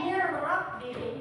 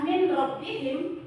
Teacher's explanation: Dia idgham bila gunnah. Bunyi nun matinya kita lebur ke huruf ro dan tidak didengungkan